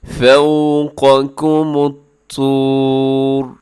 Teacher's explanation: آخر میں را موٹا پڑا جائے گا اور را کو اپنے ساکن کر دینا